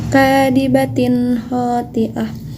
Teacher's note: Ini adalah contoh bacaan izhar karena terdapat tanwin bertemu dengan salah satu huruf izhar, yaitu huruf ho. Harus dibaca jelas.